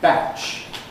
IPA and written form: bæʧ (batch)